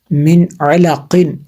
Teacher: اس میں غنہ نہیں ہوگا کیونکہ نون ساکن ہے، نون ساکن کے بعد عین حروف حلقی میں سے ہے